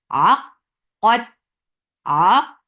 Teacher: Ain from your throat nicely and attach with Qaf. Qaf will get sifa of shidda first.